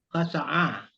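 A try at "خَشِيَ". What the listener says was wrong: Nah, jangan a pula, kau bertukar ain. Khasyaya, khasya, terus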